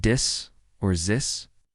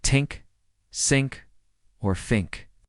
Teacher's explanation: They might substitute a TS or F sound instead of TH. So, the word this could sound like dis or zis, and the word think could sound like tink, sink, or fink.